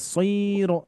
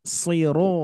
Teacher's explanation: jadi tidak kepanjangan tidak Siro tapi Sir